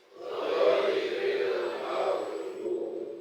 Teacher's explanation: karena magdu ada pantulannya seperti qalqalah